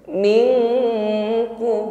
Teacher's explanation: Adlin min, dan sukun bertemu kaf, langsung didengungkan pada huruf kaf, ada bunyi eng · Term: berdengung